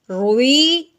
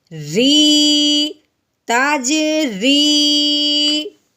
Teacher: یا ساکن کو ہم نے ایک الف کے برابر لمبا کرنا ہے